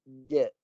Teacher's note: Suara kat tengah lidah. Tengah lidah naik tinggi, lekat. Tahan suara. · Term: pantulan jim